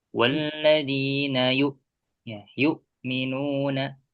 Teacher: Pastikan hamzah sukun ininya getarannya di pangkal ya atau ditengorkan bagian bawah. Jadi tidak naik ke tengah-tengah. Soalnya tadi nanti suaranya menjadi ain gitu.